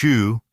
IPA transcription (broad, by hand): ʃ